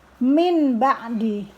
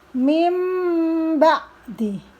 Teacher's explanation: Mim ba, nun mati ketemu ba, dibaca iklab. Nunnya berubah menjadi suara mim. Jadi tidak diperkenankan membaca min ba'di, tetapi dibaca mim ba'di.